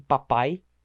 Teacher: em papai, o AI no final, os dois são falados praticamente juntos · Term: semivogal